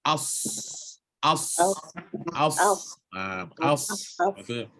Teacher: Rokhawah dan ham. Terlepas udara dan terlepas suara. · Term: huruf shad